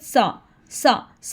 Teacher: फिर हम पढ़ेंगे सा पढ़ते हुए ज़ुबान की नोक को आपने ऊपर 2 दांतों के दरमियान लगाकर थोड़ा सा बाहर निकालना है। और इसको सीन की आवाज़ में, सिटी की आवाज़ में बिल्कुल नहीं पढ़ना